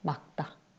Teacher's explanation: 리을 기역 대신에 기역이 발음되고 그 뒤에 오는 다가 된소리 되게 돼서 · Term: 된소리 되기